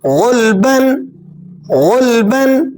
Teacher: غین لام پیش غل، لام پر جزم کا سائن موجود ہے اس لیے ہم غین کو لام سے ملا رہے ہیں اور غین کو پر کر کے بھی ادا کریں گے اس لیے کہ غین حروف مستعلیہ میں سے ہے۔